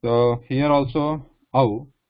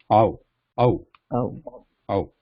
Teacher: what the lips here, ow, they are a circle here. But compared to o, ow, the lips are starting wide because it starts ah, like it's starting as ah. We're starting with ah here while pronouncing ow.